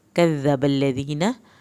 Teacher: कज़्ज़बल्लज़ीन, दाल को नरमी से अदा करें। कज़्ज़बल्लज़ीन, दाल के साथ या साकिन को खींचें, नून की ज़बर को लंबा हरगिज़ नहीं करना।